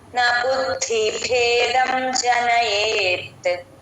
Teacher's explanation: భేదం జనయేత్ ఇక్కడ బుద్ధి బు కి దా ని జాయిన్ చేసి చెప్పాలి న బుద్ధి ద కింద ద వత్తు మహాప్రాణం ఉంది